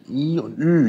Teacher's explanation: Der Unterschied ist nur die Lippenrundung.